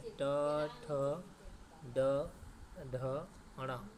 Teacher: ट वर्ग का उच्चारण कहाँ होता है? मूर्धन्य से, तो मूर्धन्य से उच्चारण होता है।